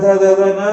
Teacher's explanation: न जब बोलते हैं तो जबान दांत से टच होती है पूरी लाइन में त थ द ध न, तो ये सारे दंत्य है। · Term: दंत्य अनुनासिक